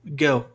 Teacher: Só que no sotaque britânico não existe a articulação desse R antes de consoante. Então é G. E aí vem o L, ó, G.